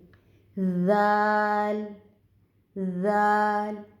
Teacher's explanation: آگے ذال، ذال، ذال کو نرمی کے ساتھ ادا کریں گے. ذال جو ہے یہ نوک زبان اور ثنایا علیہ کے کناروں سے اس کی ادائیگی ہوگی